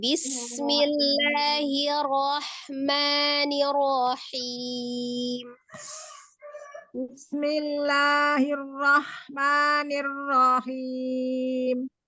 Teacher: Nirohim, rohnya tidak panjang.